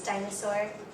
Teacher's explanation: with Dinosaur the pattern is strong weak strong